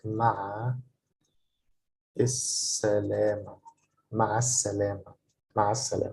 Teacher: when the letter sin, s, is following L, the lam, the L sound is not pronounced. So it's pronounced more like مع السلامة.